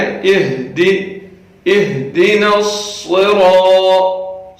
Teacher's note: یہاں پہ ہا ہے جو سینے سے ادا ہو رہی ہے، اس کا خیال کریں.